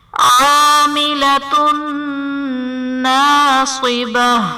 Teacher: عاملۃ ناصبہ میں تا پر دو پیش کی تنوین، تنوین کے بعد حروف یرملون میں سے نون ہے تو یہاں پر بھی ادغام مع الغنہ کا قاعدہ ہوگا، یعنی تنوین میں ہم غنہ کر کے پڑھیں گے